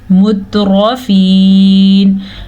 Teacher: البتہ را کو ہم موٹا پڑھیں گے کیونکہ را کے اوپر زبر ہے. یہاں پہ یا مدہ ہے یا ساکن سے پہلے زیر ہے تو ہم نے اس کو کھینچا مترفین.